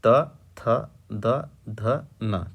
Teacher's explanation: ठीक है, अब आगे बढ़ेंगे तो त, ये आपके दंत, अर्थात इन वर्णों का उच्चारण बिना दांतों के टच के नहीं हो पाता है